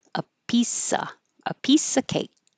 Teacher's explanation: Hold that final K and not release